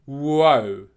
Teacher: so your lips have gone /w/ and then they're going back up to /ʊ/